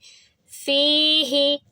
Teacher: اس فا کی آواز لمبی ہوگی کیونکہ یا سے پہلے زیر ہے، یا ساکن سے پہلے زیر آ جاتا ہے تو پھر وہ بھی مد بن جاتا ہے، اور اس کی آواز کو بھی 2 سیکنڈ لمبا کریں گے، لیکن ہا کی آواز کو 1 حرکہ رکھیں گے۔